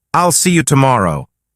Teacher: Notice how there's a tiny pause after I'll see you. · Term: pausing